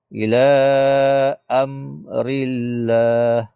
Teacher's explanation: Rillah ni lafaz jalallah yang kena nipiskan. Kena rabaris di bawah.